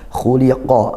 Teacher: Khuliqo khnya ditebalkan. Khuliqo qof-nya juga tebalkan.